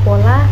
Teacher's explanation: Hai yang pertama yaitu konsonan hambat bilabial t&b dilafalkan dengan cara bibir atas dan bibir bawah terkatup rapat sehingga udara dari paru-paru tertahan untuk sementara waktu